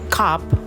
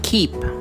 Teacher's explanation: in cop, the sound k touches the roof of the mouth farther back compared to the k in the word keep. This happens due to the anticipation of the incoming vowel in each word.